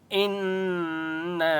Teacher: إنا حمزہ نون زر ان، نون کے اوپر تشدید ہے اس لیے یہاں پر غنہ ہوگا، اور نون کے اوپر چھوٹی مد ہے اس لیے نون کو 3 سے 4 الف کی مقدار کھینچ کر پڑھیں گے